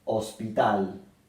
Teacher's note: la palabra hospital también se acentúa en la última sílaba pero no lleva tilde porque termina en l Entonces no lleva